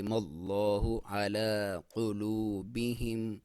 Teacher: قاف کو موٹا، لام کو باریک